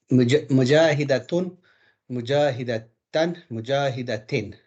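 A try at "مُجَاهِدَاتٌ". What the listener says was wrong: Mujahidatun. Stretch it a little bit. Mujahidatun.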